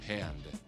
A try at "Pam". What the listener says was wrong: With an M. There's no D. It's Pam. Here, it's P. M. M. No, there's just one M.